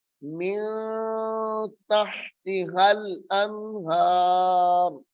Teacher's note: ملا کر اخفا کر کے پڑھیں گے، یعنی غنہ کر کے پڑھیں گے